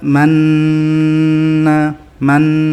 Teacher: mencampur bentuk bibir damah di antara hunah Nun tetapi suaranya tetap pada dengungan Nun yakni suaranya tetap sama antara saat bibir mencucu dan tidak mecucu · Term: ismam